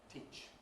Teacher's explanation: The /iː/ is followed by a fortis consonant, /ʧ/, therefore gets ‘pre-fortis clipped’ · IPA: [tiˑʧ]